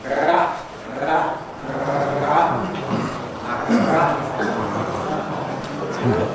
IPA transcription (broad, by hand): ʀ